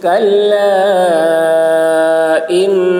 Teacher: کلا میں مدے کھینچیں گے. کلا ان نون مشدد غنہ ہوگا